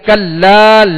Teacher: یہاں کلا لام کے ساتھ الف مدہ ہے، ایک الف کی مقدار میں کھینچیں گے